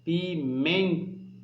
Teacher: Veja que o men sai com mais força, ok? Portanto, o men é a sílaba mais forte, é a sílaba pronunciada com maior intensidade e, portanto, é a sílaba tônica correta desta palavra, certo?